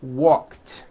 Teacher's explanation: of course the word is spelled with an ed ending it's just pronounced as a t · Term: unvoiced T